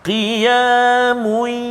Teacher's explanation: dhammatain bertemu dengan ya. Kat situ idgham ma'al gunnah. Kan, masukkan bunyi tanwin ke dalam ya.